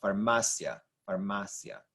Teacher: second to last syllable stressed on the m a